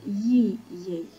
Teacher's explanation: De exemplu, în cuvântul ei, ei, diftongul ei este descendent, pentru că începe cu vocala e și la semivocala i, vocea trebuie să coboare